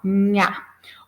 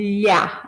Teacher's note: Quando a gente pronuncia nha, a nossa língua toca lá no palato, lá no céu da boca, né? Então, por isso que ela é chamada de consoante palatal, nha, ou lhá, né?